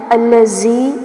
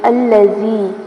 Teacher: تبارک الذی، یہاں دیکھیے تبارک الذی، با کے اوپر کھڑی زبر ہے تو اس کو تھوڑا سا کھینچ کے پڑھیں گے، را کو پر کیا جائے گا کیونکہ را کے اوپر زبر آ رہی ہے، اور الذی میں زال کو نرمی سے پڑھنا ہے، اس کو سختی سے نہیں پڑھنا